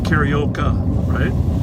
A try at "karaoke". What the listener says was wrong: You've got one too many syllables. Karaoke.